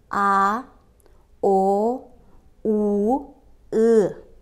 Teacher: Жоон үндүүлөрдү айтканда, тил артка карай тартылып, анын түп жак бөлүгү жумшак таңдайды көздөй көтөрүлөт.